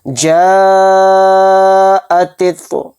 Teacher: وَوَجَدَكَ ضَالًّا فَہَدَىٰ، فا زبر فا، حمزہ زیر ای، فئی، ذال الف زبر ذا، فَإِذَا، جیم الف زبر جا، اوپر مد، جا، حمزہ زبر آ، جا آ، تا تو زیر تیتو، جا اتیتو، یعنی الف مدہ، حروف مدہ کے بعد حمزہ آ رہا ہے اسی کلمے کے اندر، تو اس میں مد متصل کا قاعدہ ہوگا، اور اس مد کو 4 الف کی مقدار ہم کھینچ کر پڑھیں گے